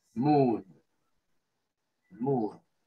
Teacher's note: Esa doble O de moon se pronuncia como una U larga, como nuestra U, pero un poquito más larga.